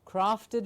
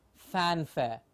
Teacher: The lower lip goes in, it's a labiodental sound